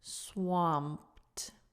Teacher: So the P goes straight into the D.